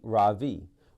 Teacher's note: In America, people call me Ravi with the stress on the first syllable.